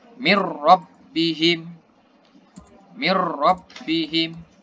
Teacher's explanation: Dia nggak dengung. Langsung masuk tapi nggak dengung. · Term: idgham bilaguna